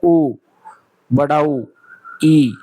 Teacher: आपका जो मुंह है वो लगभग बंद रहेगा, थोड़ा सा खुला रहेगा, लगभग बंद रहेगा, तो उसको हम संवरित स्वर बोलेंगे।